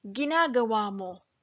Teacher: spoken slowly the word ginagawa has a glottal stop ginagawa but when spoken fast with a word right after There's no time for the glottal stop